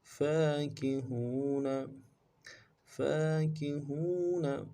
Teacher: फा के ऊपर खड़ा ज़बर है, एक अलिफ दाल में खींचेंगे, काफ को नून से पढ़ेंगे, हा को वाव के साथ मिलाना है, वाव मद्दा है, एक अलिफ दाल में खींचेंगे, नून को नून से अदा करेंगे, वक़्फ़ की सूरत में नून को साकिन करेंगे।